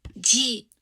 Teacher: G. Yeah, so this one is kind of a short falling tone